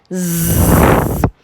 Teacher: second sound for today Z remember this is a voice sound make sure there is a vibration make sure your vocal cord your throat is vibrating